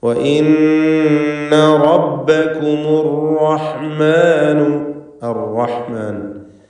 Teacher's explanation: റാഇന് തഫ്ഖീം കൊടുക്കണം, തടിപ്പിച്ച് റാ ഉച്ചരിക്കുക